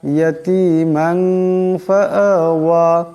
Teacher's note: আলাম ইয়াজিদকা ইয়াতীমান, এখানে মিমের উপর দুই জবরের তনমিন, এরপর ফা আসছে। মিমের দুই জবরের তনমিনকে ইকফার গুণা করিয়া পড়তে হবে, একালি পরিমাণ ইকফার গুণা হবে।